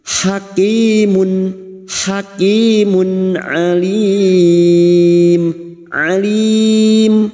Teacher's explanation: nun sukun atau tanwin yang bertemu dengan enam huruf ini termasuk huruf Ain ini maka bunyi tanwin dum tanwin atau dumatain dibaca jelas tanpa mendengung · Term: Idhar halq, idhar halki